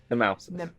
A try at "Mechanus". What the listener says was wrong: There's no T in it.